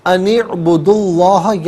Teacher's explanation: اسم اللہ کی حرف لام سے پہلے والے حرف پر یعنی دال پر پیش ہے، تو ناظرین جب پیش یا زبر ہو تو پر کر کے پڑھتے ہیں، زیر ہو تو باریک کر کے پڑھا جاتا ہے۔